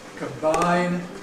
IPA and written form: kəmˈbaɪn (combine)